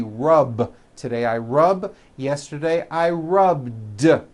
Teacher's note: with a voiced b rub today i rub yesterday i rubbed all i did was was add a voiced d sound at the end